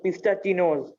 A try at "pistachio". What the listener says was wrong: Pistachio. नौ नहीं है इसमें. Pistachio. spelling में n नहीं है.